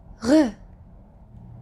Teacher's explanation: French R is pronounced at the back of your throat. Think of when you're gargling, like you put water in your mouth and do R.